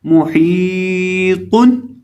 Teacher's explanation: हा को हम हलक के वस्त से अदा करेंगे और लंबा करके पढ़ेंगे। मुहीतुन, और आखिर से जो तो है इसको मोटा भी करेंगे।